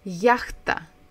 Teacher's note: Яхта. So we stress the first syllable, ях. Яхта.